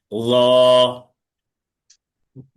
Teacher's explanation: জ বললে কি বর্গের জর মতো হয়ে যাবে, কিন্তু এটা আলাদা। র হচ্ছে জিহ্বার আগা, সামনের উপরের 2 দাঁতের আগার সাথে লাগবে, মোটা আওয়াজে 1 আলিফ টেনে পড়তে হবে।